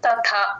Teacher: తథా మామూలు ప్లేన్ తర్వాత టిహెచ్ ఏత రెండు పక్క పక్కన వచ్చినప్పుడు కొంచెం క్లియర్ గా వినపడేటట్టు చెప్పాలి